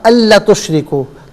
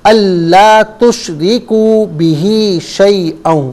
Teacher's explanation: اللہ لام الف زبر لا ہے، اسے ایک الف کی مقدار کھینچ کر پڑھیں گے. تشریکو میں کو بھی ایک الف کی مقدار کھینچ کر پڑھیں گے.